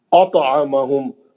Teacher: तोय पे खलखले सगरा करेंगे, लेकिन तोय मुस्तलिया का है तो मोटा खलखला करेंगे. अतअमहुम, मीम साकिन का इदगाम शम्सी, इदगाम शरी, इदगाम शफवी हर्फ मीम, मीम साकिन का इदगाम शफवी हर्फ मीम, मीम साकिन के बाद मीम आ गया, इदगाम शफवी हो रहा, गुन्ना करेंगे मीम का.